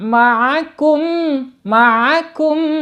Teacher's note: makharijul huruf ain ya, jangan sampai ain menjadi alif